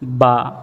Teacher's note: আমরা যখন বা উচ্চারণ করব তখন আমাদের ঠোঁটগুলা দুই ঠোঁটের মধ্যখানে স্পর্শ হবে